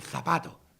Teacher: la seta interdental con la lengua entre los dientes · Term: Z interdental